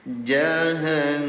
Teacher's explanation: Dengungkan cara bacanya selama dua rakaat ditahan. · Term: ghunah